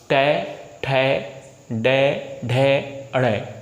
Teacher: जीभ पीछे मुड़ेगी और बहुत तेज़ी के साथ नीचे आएगी, जिसे हम कहते हैं मूर्धन्य